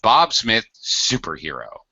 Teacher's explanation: Superhero is actually a set phrase. So, of course, I need to stress super.